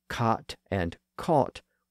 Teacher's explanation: the words cot and caught were both pronounced as cot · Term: merger